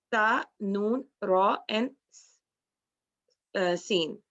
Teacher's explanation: In the articulation of the solar letters, the tip of the blade of the tongue is involved